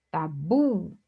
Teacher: observe que aqui a última sílaba é a mais forte. Então, oxítona.